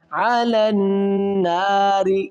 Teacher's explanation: یہاں پر نون ہے مشدد ہے، یہاں پر غنہ کریں گے، نون مشدد غنہ